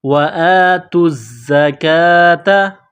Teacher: وَأَقِيمُوا الصَّلَاةَ وَآتُوا الزَّكَاةَ، کڑا زبر ہے، ایک الف کے لمٹ میں کھینچنا ہے، نقطوں والی تا ہے، اس کو باریک کرنا ہے، تا کو زا کے ساتھ ملانا ہے، پلس کرنا ہے، زا کے اوپر تشدید ہے تو زا کو دبانا ہے، سختی کرنی ہے، زا میں سیٹی کی آواز پیدا کریں گے۔ وَآتُوا الزَّكَاةَ، جب یہاں پر وقف کریں گے تو گول تا کو ہا سے تبدیل کریں گے۔